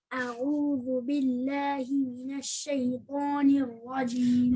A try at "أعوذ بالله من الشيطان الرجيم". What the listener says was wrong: Okay, make the ayn like tighter. A'u. You try the whole thing.